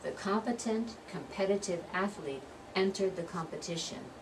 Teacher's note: competent, that's that first syllable one. Competitive, the second syllable one. Competition is the third syllable one.